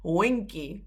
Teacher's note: So there's no D. You don't pronounce the G. You go for wing and then key.